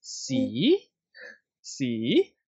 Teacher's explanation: high rising or low rising the high rising one becomes people it starts off from three and then go up to five so it's like this c c yeah when you are surprised